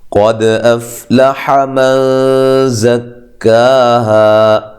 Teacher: قد افلح من زکاها، قاف کو موٹا، دال کو ہلا کے پڑھنا ہے، قلقلہ ہے، قلقلہ کر کے پڑھنا ہے